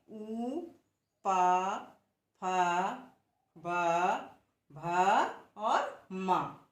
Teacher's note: और हम इन ध्वनियों को जब आप उच्चारित करके देखेंगे तब देखेंगे कि जब हम इन वर्णों को उच्चारित करते हैं तब हमारे ओष्ठ पर जोर पड़ता है।